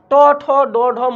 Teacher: এগুলো হচ্ছে মূর্ধন্য ধ্বনি, যেগুলো মৃধা থেকে উচ্চারণ হয়